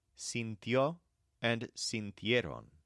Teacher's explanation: in the case of murió and sintió, the stress occurs in a diphthong